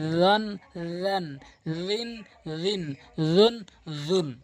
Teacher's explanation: এখানে র উচ্চারণ জিহ্বার আগা দাঁতের আগার সঙ্গে হালকা মিলাতে হবে।